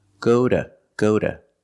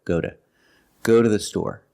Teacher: using the fast D and the short schwa sound, go to. Go to the store.